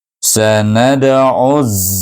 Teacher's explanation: Ain itu baris depan bertemu dengan alif lam samsah, maka kita idgham samsikan ain baris depan itu dengan huruf zai.